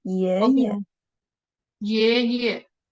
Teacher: 爷爷。The neutral tone. The second syllable is the neutral tone. Read it very short and light.